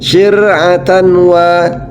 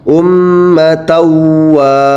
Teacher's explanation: cara membacanya dimasukkan suaranya, suara nunnya atau tanwin ke huruf idgham. Nah, huruf idghamnya adalah huruf waw. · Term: idgham bi gunnah